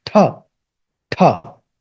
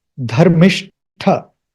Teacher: It's not ta, it's tha, tha. There is a little bit of H sound there.